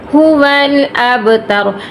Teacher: با پہ کلکلا کریں گے کیونکہ با ساکن ہے، با حروف کلکلا میں سے ہے۔